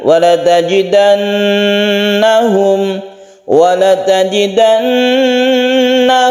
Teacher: asli maka disebut dengan guna dan dadah gunakana dia itu bertasydid Nun yang bertasydid itu dipanjangkan kita tahan ketika membaca